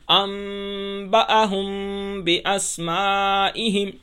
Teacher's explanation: میم ساکن کے بعد اگر با آ جائے تو ہم میم کی آواز کو ناک میں چھپا کر پڑھیں گے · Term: اخفا میم ساکن